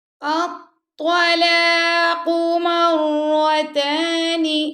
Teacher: مرہ کی را کو پر پڑھنا آپ نے